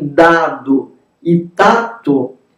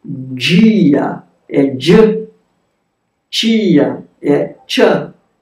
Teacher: Vejam, quando aparecem dado e tato, eles, a realização, como vocês veem, é uma oclusiva que não dá para dizer isoladamente. Antes da vogal I, esses dois fonemas, na maior parte das variedades sociolinguísticas no Brasil, vão palatizar e africar. Então, vejam como a gente diz dia é dia, tia é tia.